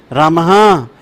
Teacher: विस भी हा जैसी ध्वनि देता है